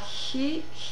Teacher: your mouth is in position for e so it's a little bit of a constricted H sound your lips are already rounded for when you express that H